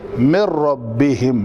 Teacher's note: نون مکمل طور پر ختم، اس کو کہتے ہیں ادغام کامل